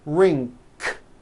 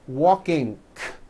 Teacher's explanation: Some people who speak English as a second language have gotten into the bad habit of adding a K release sound, k, k, like that, after an ng ending.